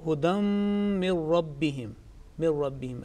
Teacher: Next one, the min, the noon sakin followed by ra mushaddad, which there is no nasal sound